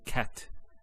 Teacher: the T doesn't have any vowel associated with it it's actually just a stop on the T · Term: sukoon